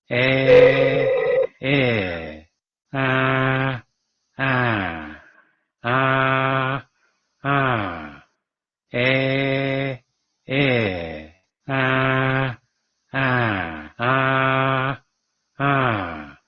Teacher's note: El timbre de la vocal cambia por la apertura que está teniendo la boca